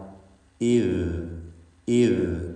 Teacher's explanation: ദാൽ ഉച്ചരിക്കുമ്പോൾ നിർബന്ധമായും നാവിൻ്റെ തലപ്പ് പുറത്തേക്ക് വരണം. ഇദ് ഇദ് പല്ലിൻ്റെ പുറത്തേക്ക് കാണുന്നർത്ഥം.